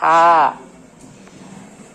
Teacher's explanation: ha sifatnya rohoah nafasnya mengalir mengalir keluar